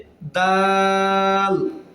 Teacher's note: জিহ্বার আগা, সামনের উপরের দুই দাঁতের গোড়ার সঙ্গে মিলিত হয়ে উচ্চারিত হবে